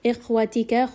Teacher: Kha is going to be heavy.